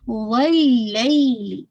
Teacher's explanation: لین ہے 2 کاؤنٹ پڑھنا ہے. لام کی کسرہ شارپ رکھے گا.